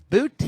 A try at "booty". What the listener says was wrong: You pronounce the T. very sharply.